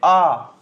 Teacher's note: जीभ पीछे चली गई, पश्च हो जाएगा।